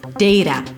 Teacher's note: The T here is actually a flap T, which sounds like a D, and the first sound is A as in day.